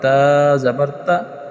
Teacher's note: متحرک حرف کو لمبا نہیں کرتے، تو تا زبر تا لمبا نہیں ہوگا بلکہ تا زبر تا یوں ہوگا۔